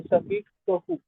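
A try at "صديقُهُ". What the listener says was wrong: सदीकुहु। ठीक है, दो पेश में से एक कम कर दिया, तो सदीकुहु,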